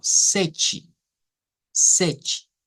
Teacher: vemos el cambio que se da en los fonemas del portugués en primer lugar una t que suena como ch Y en segundo lugar una e al final que suena como I